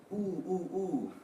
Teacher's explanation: This is a long vowel sound. In the back of your tongue, it should raise up